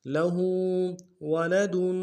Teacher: دال کے اوپر تنوین غنہ کریں گے